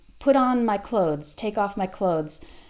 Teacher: the th is there but it's very very short and when you're listening to a native speaker you might not even hear it